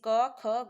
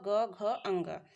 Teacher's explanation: अघोष में स्वर तंत्रियों में कंपन नहीं होता है, जबकि घोष में स्वर तंत्रियों में कंपन होता है।